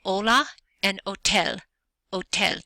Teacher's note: the letter H is silent you don't hear it